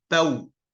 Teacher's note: Tapi kalau sebelum wawu mati itu bukan dhammah tapi fathah, bukan panjang tapi bau.